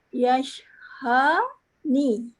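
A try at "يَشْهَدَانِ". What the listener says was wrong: Cuba tengok. Ejaan asal tu ada huruf dal. Dalam bacaan tak bunyi dal pun.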